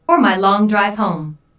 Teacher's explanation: notice the emphasis and intonation on home the speaker wants to show humor here